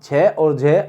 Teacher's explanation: छे और झे अधिक वायु के साथ महाप्राण